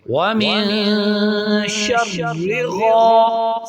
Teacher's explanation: غین بھی جو ہے حروف مستعلیہ میں سے ہے اس کے لیے اس کو موٹا پڑھیں گے